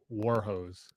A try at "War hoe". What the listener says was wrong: H-O-E. Ho. Singular. Singular. one war. ho.